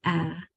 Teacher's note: when you make that short sound of A that your mouth is open big and wide and round, as much as you can make it to make sure that sound is correct. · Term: short vowel sound